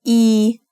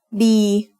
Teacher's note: It is a long vowel that makes the sound e like a double e in green.